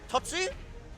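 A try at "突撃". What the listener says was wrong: Don't forget the Geki.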